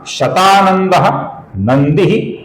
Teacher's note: शतानंदः के विसर्ग का आगे न आने के कारण ओ हुआ है। नंदी का जो अंतिम अक्षर है, ह्रस्व अक्षर है, इसका हमें लघु उच्चारण करना होगा।